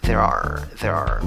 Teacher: Cuando hablan rápido, esa R la reducen un poco y suena como R.